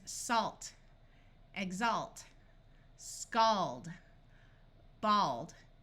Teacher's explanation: if you have a l plus another consonant at the end of a root word the a will have its broad a sound